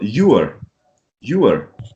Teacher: in british english at least you're not going to pronounce the r